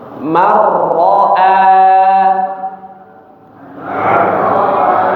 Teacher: tapi langsung dimasukkan ke huruf ra ya, tanpa dengung marro ya. Jadi seperti huruf ra yang bertasydid.